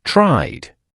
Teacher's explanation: The base verb try ends with a vowel sound which is always voiced. So a voiced ending means we use the voiced sound.